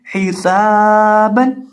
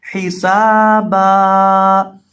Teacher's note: سین کے اندر سیٹی کی آواز پیدا کر کے پڑھیں گے. اس کو ایک الف کے برابر لمبا کریں گے اور با پر وقف کرتے وقت ایک زبر کو گرا دیں گے.